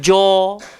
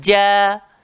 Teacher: Tengah-tengah lidah. Langgar langit atas. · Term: jim